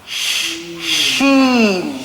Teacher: As for our Sheen, this letter is also on the middle part of the tongue.